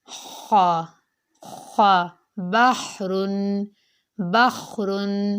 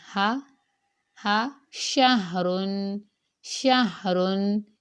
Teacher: ہا کی جو آواز ہوتی ہے وہ حلق سے رگڑ کھا کر ادا ہوتی ہے، خا خا، بحرن بخرن، ٹھیک ہے۔ اور جو ہا کی آواز ہوتی ہے وہ حلق سے رگڑ کھائے بغیر ادا ہوتی ہے